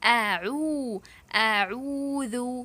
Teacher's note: حلق کے درمیانی حصے سے. تو پہلے حلق کے آخری حصے سے آ، پھر حلق کے درمیانی حصے سے عو، تھروٹ کے مڈ آف دی تھروٹ سے عو. · لپس راؤنڈ بیکاز آف ضمہ